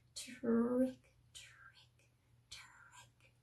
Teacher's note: Turn your voice off, and all of a sudden it sounds a lot like the ch sound because we don't have the voice in that R.